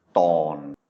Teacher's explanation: it's a mid-tone because it's a mid-class consonant with a sonorant final, making it a live syllable.